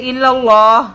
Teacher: لفظ اللہ کے لام کو باریک پڑھ دیا